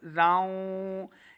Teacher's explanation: یہاں پہ غنہ کرنا ہے کیونکہ واو حروف جر ملون سے ہے تنوین کے بعد